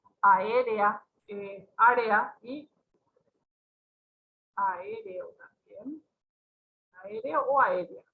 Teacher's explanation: No están en una sola sílaba. Nosotros no pronunciamos esa secuencia de vocales en una emisión de voz. Entonces forman parte de dos sílabas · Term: hiatos